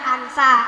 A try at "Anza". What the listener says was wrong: Anza. Z bukan S.